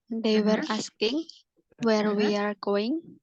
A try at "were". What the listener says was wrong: They were, oke, bukan where tapi were. Nah, ya, jangan sampai salah karena ketika kita bilang where itu pasti nanti nyambungnya ke sini. Jadi ini were. Kalau to be itu were bacanya.